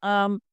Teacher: آرائیت ان کان علی العین زبر عام، عین کو ادا کریں گے، عین اور حمزہ میں فرق کریں گے اور عین کو پر پڑھیں گے کیونکہ یہ حروف مستعلیہ میں سے ہے